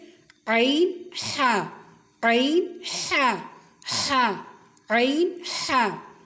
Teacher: عین حا، وسط حلق سے یہ دونوں حروف ادا ہوتے ہیں · اور حلق کے درمیان والے حصے سے یہ دونوں حروف ادا ہوتے ہیں۔ حلق کے درمیان والے حصے ہی کو وسط حلق کہتے ہیں۔